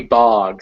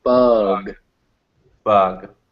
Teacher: when you say bug, it's a little higher up in your mouth.